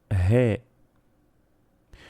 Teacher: en ucraniano esta letra corresponde a una fricativa glotal y se pronuncia G.